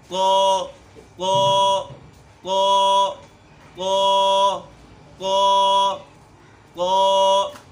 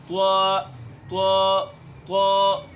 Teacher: تو اس کا مخرج بھی وہی ہے جو دال کا مخرج تھا، جو تا کا مخرج تھا، اور اسی طریقے سے تو کا مخرج بھی وہی ہے، یعنی زبان کی نوک جب ثنایا علیہ کی جڑ سے لگے تو اس سے تو ادا ہوتا ہے۔